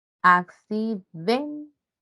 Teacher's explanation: Sílaba tónica en den